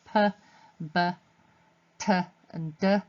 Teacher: p and b both using both lips, so those are bilabial plosives